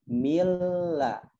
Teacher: Kemudian yang kedua yaitu huruf lam, ya mil ladunhu, min la dimasukkan menjadi milla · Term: idgham bila gunnah